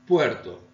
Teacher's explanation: La O breve se convierte en diptongo ue.